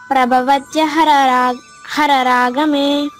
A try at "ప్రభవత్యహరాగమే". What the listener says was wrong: 2 రాళ్ళు ఆడ చెప్పినా నేను ఆడ. ఎందుకు 8 అక్షరాలే ఉంటాయమ్మా. మీరు 9 అక్షరాలు మాట పలుకుతున్నారు. ప్రభవత్యః అన్ని రాళ్ళు ఆడున్నాయి, ఒక రానే ఉండేది ఆడ. ప్రభవత్యః రాగమే.